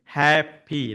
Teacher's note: we would stress on the first syllable like happy